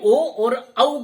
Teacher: कंठ से ध्वनि निकलती है और ओष्ठों को छूती हुई बाहर निकलती है, यानी हमारे होठ भी प्रतिक्रिया करते हैं जब हम ओ और औ का उच्चारण करते हैं। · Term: कंठोष्ट